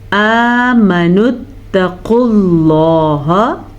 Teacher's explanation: قاف موٹا پڑھیں گے، لفظ اللہ کو بھی